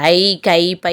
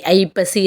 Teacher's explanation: ஒரு சொல்ல வரும்போது அந்த ஐப்பசி இருக்குல்லையே, அதே மாதிரி ஐகாரம் முதலில் வந்துச்சுன்னா, அந்த சொல்லினுடைய முதலில் வந்துச்சுன்னா அது 1.5 மாத்திரையாக குறைந்து ஒலிக்கும்